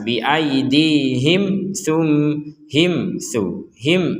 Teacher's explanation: mim mati bertemu taa maka kita menjelaskan atau membacanya dengan jelas